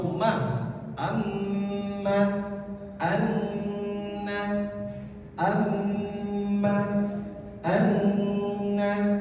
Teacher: Mim dan nun yang bertasydid itu keluarnya dari rongga hidung ketika dengungnya. Al-khayshum. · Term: huruf gunnah